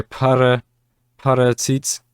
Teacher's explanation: this is an equivalent of an f but it's not pronounced as an f it's pronounced as an aspirated p